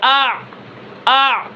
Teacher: عین، حمزہ عین زبر آ، آ، آواز کے اندر بلندی ہے، عین کا جو سانس ہے وہ ختم ہو گیا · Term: جہر